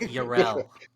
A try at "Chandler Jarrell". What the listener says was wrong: Why do you keep pronouncing my name wrong? You know there's a J in it, right? Chandler Jarrell.